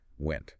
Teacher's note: ends in a sharp abrupt T that just violently cuts off the air